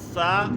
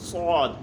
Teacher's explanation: ثا کی آواز نرمی والی بغیر سیٹی کے، جبکہ صاد کی آواز سیٹی والی اور موٹی بھی ہوتی ہے۔ ثا کی باریک ہوتی ہے بغیر سیٹی کے، جبکہ صاد کی آواز جو ہے وہ سیٹی والی ہوتی ہے اور موٹی بھی ہوتی ہے، پر کر کے پڑھا جاتا ہے صاد کو۔